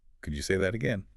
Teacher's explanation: Friendly and neutral. Keep your voice rising.